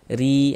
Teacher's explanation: Baris di bawah nih. Maka huruf ro ini kita baca tipis tarkik. Ee sehingga ee posisi lidah kita rileks saja, santai